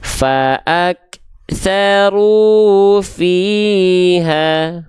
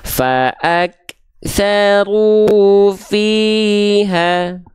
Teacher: dibaca dengan kadar panjang dua harakat tidak kurang tidak lebih ya Oke sip jelas pastikan tepat dua harakat teman-teman sekalian ya